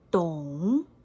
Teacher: We add a tone mark for this one. The pitch starts at the middle level and raises gradually. The seventh tone is dong. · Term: fifth tone